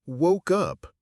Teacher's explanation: The k sound at the end of woke links right into the vowel up. It's not woke up, it's woke up.